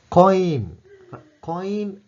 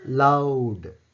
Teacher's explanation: the sound begins as one vowel and moves towards another. இதுல இவைகள்ல ஒரு உயிர் சத்தத்துல தொடங்குற ஒரு உயிர் சத்தமாக தொடங்கி இன்னொரு உயிர் சத்தத்தை நோக்கி நகர்ந்து செல்ற. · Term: டிப்தாங்